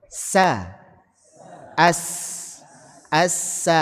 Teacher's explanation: Tajamnya suara karena mengalir dari celah yang sempit. · Bukan as bukan nyebar tapi as tajam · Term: sifat safir